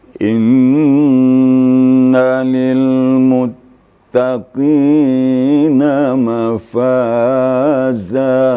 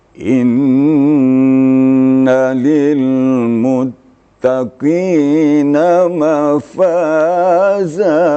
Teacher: Umpamanya kalau serius, ujungnya agak turun sedikit.